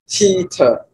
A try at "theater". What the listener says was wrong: But don't close your mouth. Theater. If you do an S, it means your mouth is closed, your teeth are closed, and your tongue is behind your teeth, right? Because if I blow and I close my teeth, and my tongue is behind, of course, or I'd bite my tongue, you're going to get S.